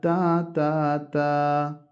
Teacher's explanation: താൻ്റെ മഖ്റജ്, നാവിൻ്റെ തലയും മേലെ മുൻപല്ലുകളുടെ മുരടം. നാവിൻ തലമേൽ മുൻപല്ലിൻ്റെ മുരടിൽ ചേർത്താൽ താ താ താ. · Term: മഖ്റജു ത